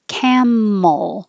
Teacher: the tongue holds in the L position for a little longer duration so you can hear the L